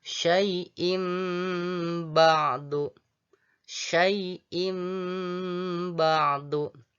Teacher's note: Jadi tanwin pada kata syai'in ditukar menjadi bunyi m. Sekali lagi ditukar menjadi bunyi m atau sehingga menjadi syai'im.